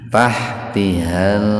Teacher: idhar qamariyah atau alif lam qamariyah. Lamnya dibaca jelas.